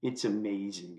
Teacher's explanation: I'm so tired of hearing people saying this especially younger women saying this with their vocal fry